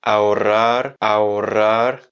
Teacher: un R final qu'on va rouler moins longtemps, qui va être beaucoup plus léger